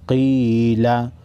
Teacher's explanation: क़ाफ हुरूफ़ मुस्तालिया में से है, मोटा पढ़ेंगे